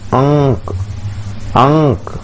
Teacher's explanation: अनुस्वार है तो इसको हम नाक से उच्चारित करते हैं